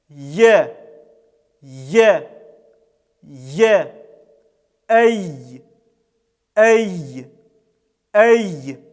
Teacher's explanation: Образуется щель, через которую и проходит этот звук. Он является щелевым и является сонантой. В нем доминирует голос над шумом. Этот звук является мягким и читается через «э».